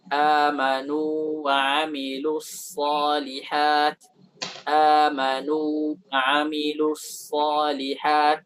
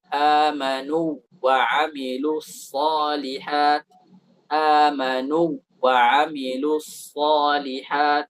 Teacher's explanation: Walaupun waw bertemu dengan waw, tapi di sini izhar.